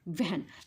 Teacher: म्हणताना आपल्या ओठांचा काय होतो रे गोल होतो म्हणजेच काय व्ॅन तेव्हा आपले वरचे दात आहेत ना खालच्या ओठांना लागतात